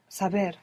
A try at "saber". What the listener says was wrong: This is a B. This is a B. So you're not going to pronounce a V. We need to open up that association of the letter V to include that soft B.